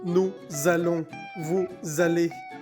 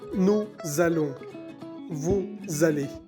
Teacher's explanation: hacemos una vibración cuando decimos nous allons, vous allez, porque la S final de nous y de vous está entre dos vocales. Entonces hay que hacer bien la vibración para identificar el verbo.